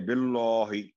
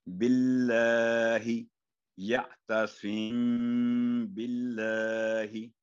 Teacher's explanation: اب یہاں ہم نے اللہ کے نام کو باریک کر کے پڑھا، کیونکہ اللہ کے نام سے پہلے با ہے اور با کے نیچے کسرہ ہے یعنی زیر ہے. تو ہمیشہ جب بھی اللہ کے نام سے پہلے حرف کے نیچے زیر یا کسرہ ہوگی تو ہمیشہ باریک کر کے پڑھیں گے